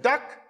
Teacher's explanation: duck in Sylheti meaning drum is realized with high tone